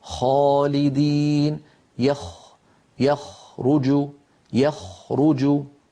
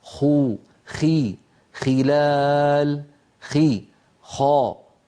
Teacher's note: الخاء أعلى بقليل من الغين، وهي أيضا من أدنى الحلق، يعني من منطقة جذر اللسان مع الحنك اللحمي.